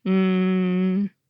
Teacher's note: You can even make an /n/ sound without any vowel after it at all: “nnnnnnn.” Phoneticians describe consonants that are pronounced this way as syllabic, because they’re serving as a syllable all by themselves.